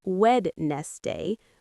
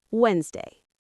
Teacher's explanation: W D N E S D A Y. But we don't say wed nest day. We say Wednesday. The D is silent.